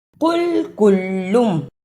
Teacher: قل قاف کو موٹا پڑھنا ہے، کلم اس کاف کو نرم زبان سے ادا کرنا ہے۔ قل اور کل دونوں میں فرق ہے۔